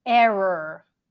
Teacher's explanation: when you say it fast sometimes it just sounds like one long R